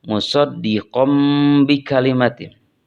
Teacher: di sana ada tanwin pada huruf qof kemudian diikuti oleh ba maka tanwinnya diubah ke dalam mim atau ke bentuk mim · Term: iqlab